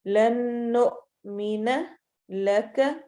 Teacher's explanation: حمزہ پر چونکہ جزم آ گئی ہے تو اس لیے جھٹکے کی آواز ہوگی تھوڑی سی